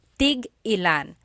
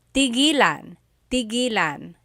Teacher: when there's a hyphen in it, you have to have that glottal stop